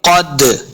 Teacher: वाला, वाला, क़द, क़ाफ हुरूफ मुस्तालिया से, इसको मोटा करेंगे। दाल साकिन है, दाल हुरूफ क़लक़ला से है, इसको खूब वाज़े करेंगे। क़द यानी इसको हरकत देना है, जुम्बश देके पढ़ना है।